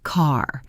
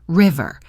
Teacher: Keep the tip of your tongue down. As you pull your tongue back, the E sound will change into an R sound. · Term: American R